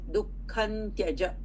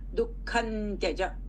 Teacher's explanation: this anuswara is pronounced as nakara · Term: anuswara sandhi